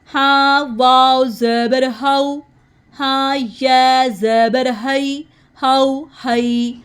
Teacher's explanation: ہاں کو ہم حلق کے نیچے سے ادا کریں گے